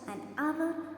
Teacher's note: The word hour starts with a consonant letter, but here comes a vowel sound because H is silent. So we use article an before that noun.